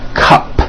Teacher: It ends with an unvoiced P.